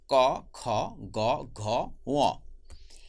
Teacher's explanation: এই 5টা বর্ণের উচ্চারণের স্থান একই। সবগুলি বর্ণের উচ্চারণ স্থান হলো কণ্ঠ। এজন্য আমরা একসাথে করে তাদেরকে নাম দিয়েছি কণ্ঠধ্বনি।